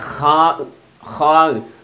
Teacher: തൊണ്ടയുടെ മേലെ അറ്റത്ത് നിന്നാണ് ഹാ പുറപ്പെടേണ്ടത്.